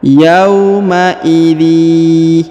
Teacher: Yauma idzi ya, ini namanya idgham bi gunnah, idgham dengan dengung ya. Pertemuan antara tanwin in bertemu dengan ya bertasdid, maka kita tahan dan ditekan, didengungkan 2 harokat ya.